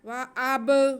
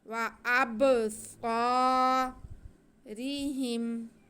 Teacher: آگے صاد پہ زبر اور ساتھ میں الف ہے، یہ الف مدہ ہے، اس کو ہم کھینچ کے پڑھیں گے، الف سے پہلے زبر ہو تو الف مدہ ہوتا ہے۔